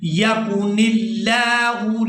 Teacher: لفظ اللہ کے لام کو باریک ادا کرنا ہے